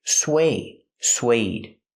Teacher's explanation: Use the w sound, like in what and where, sw. Plus the long A, like bake a cake.